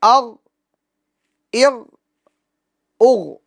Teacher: اغ اغ اغ, اس میں بھی بعض حضرات آواز کو لوٹاتے ہیں, جیسے ما اغنا اغ, اغنا اغنا نہیں ہے, ما اغنا ما اغنا اغ, اغنا اغنا اغنا. یہ غین کے سکون میں جنبش نہیں دینی, یعنی آواز کو لوٹانا نہیں ہے, ٹھیک ہے. آواز اس کے مخرج میں رک جائے گی, سکون کامل طور پر جمع طور پر ادا ہوگا.